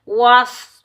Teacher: स्वाद हरूफ़ मुस्ताइला में से आ रहा है, तो स्वाद को हम मोटा पढ़ेंगे, बगैर खंचे पढ़ेंगे।